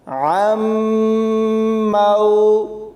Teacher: ناظرین، اس میں عین کو میم کے ساتھ ملانا ہے، نون ساکن ہوگا کیونکہ جب بھی ساکن اور مشدد حروف اکٹھے آئیں گے تو ساکن حرف کو چھوڑ کر مشدد حرف کے ساتھ ملاتے ہوئے پڑھا جائے گا اور غنہ کیا جائے گا، یعنی عین میم زبر عم، میم واو زبر مو، عم مو، عین زیر عی، دال زبر دا، عم موعدہ۔